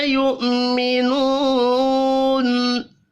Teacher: یؤمنون حمزہ ہے، یہاں پر واو نہیں پڑھنا. منو واو مدہ ہے، 1 الف کے برابر کھینچ کر پڑھیں گے.